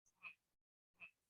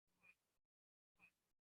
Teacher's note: Notice the shape of the voice. There's a little curve up and then a curve down in the voice.